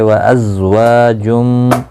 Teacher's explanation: وا الف مدہ ہے، ایک الف کی مقدار کے برابر کھینچ کر پڑھیں گے